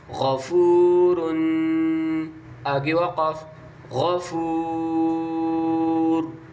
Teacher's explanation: واو مدہ کو اور الف مدہ کو آپ نے 3 الف کے بمقدار کھینچنا ہے جب الف مدہ اور واو مدہ اور یاء مدہ کے بعد والا حرف وقف کی وجہ سے ساکن ہو رہا ہو